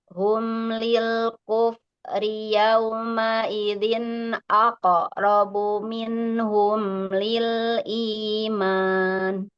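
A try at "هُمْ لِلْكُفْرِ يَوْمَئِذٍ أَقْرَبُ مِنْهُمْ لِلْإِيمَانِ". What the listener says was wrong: Nah, di sini di huruf fa-nya ya, lil kufri terlalu cepat aliran suaranya. Hum lil kufri yauma idzin aqrabu minhum.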